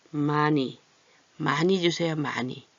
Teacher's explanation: 히읗이 이응을 만나면 같은 목구멍 계열 소리이기 때문에 얘가 소리가 없어져요